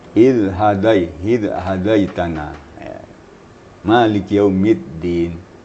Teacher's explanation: Makhraj dal itu dipertemukan ujung lidah dengan ujung gigi atas, atau sekurang-kurang papan gigi atas. Jangan ujung lidah dan dengan langit-langit, bukan urat gigi ya, tapi ujung gigi atas.